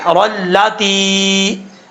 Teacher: تا کے بعد یا ہے یا مدہ، ایک الف کی مقدار لمبا کر کے پڑھیں گے